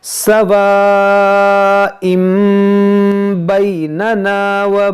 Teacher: یہاں پر ہے با، تو یہاں پر ہم کریں گے اقلاب، یعنی اس تنوین کے اندر جو نون ساکن ہے اس کو ہم میم سے بدل کر پڑھیں گے